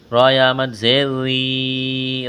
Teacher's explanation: را کو باریک کرنا ہے، را کے نیچے زیر ہے، لمبی مد ہے، اس کو کھینچنا ہے